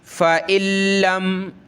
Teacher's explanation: उस नून साकिन को नहीं पढ़ा जाता, वो डिलीट हो जाता है, ख़त्म हो जाता है, ठीक है। लिखाई में नज़र आ रहा है लेकिन पढ़ेंगे नहीं, डायरेक्ट इस हमज़ा को हमने लाम के साथ मिलाना है।